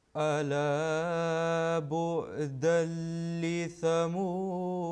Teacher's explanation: this تنوين followed by لام مشدد, لام مشدد, and that nasal sound will be dropped